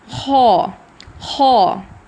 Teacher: خو اس کا اخراج حلق کے اس حصے سے ہوتا ہے جو منہ کے قریب ہوتا ہے, ٹھیک ہے, اور اس میں ایئر فلو بھی ہوتا ہے, اور اس کی ادائیگی کے وقت ہلکا سا کا ساؤنڈ آتا ہے, ہلکا سا, بہت زیادہ نہیں, ہلکا سا خو.